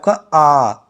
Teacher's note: आप बोल के देखेंगे तो आपका मुख जो है पूरा खुला रहेगा